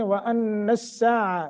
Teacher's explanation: پیچھے یا آ گئی ہے تو پھر باریک ہوگی۔ وَأَنَّ السَّاعَةَ یہاں نون مشدت ہے، غنہ کر کے پڑھیں گے